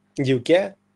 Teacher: Акцент падає на кінець, буде дівке